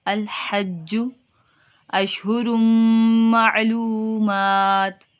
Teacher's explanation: الحج، جیم کے اوپر دیکھیں تشدید ہے، جمع دے کے، الحج اشہر معلومات۔ اب دیکھیں تنوین کے بعد میم ہے تو ادھر ادغام کا قاعدہ لگ رہا ہے، گنہ کریں گے۔ اشہر مع عین کی ادائیگی، لو واو مدہ ہو رہا ہے، معلومات کھڑی حرکات کو ایک الف کے برابر لمبا کریں گے۔